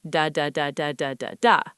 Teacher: each syllable takes up roughly the same amount of time. It sounds like a machine gun. Da da da da da da da. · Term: syllable timed language